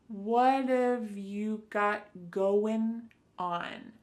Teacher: That final G in the word going is going to be cut off and we'll just say going. · So what and have are going to be pushed together. What have you got going on?